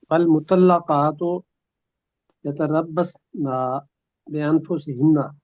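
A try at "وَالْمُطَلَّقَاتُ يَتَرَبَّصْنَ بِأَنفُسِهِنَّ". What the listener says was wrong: یتربص نہ کہہ دیا، معنی بالکل بدل گئے جی. اگر یتربص نہ کہیں گے تو پھر معنی ٹھیک ہوں گے کہ وہ انتظار میں رکھیں.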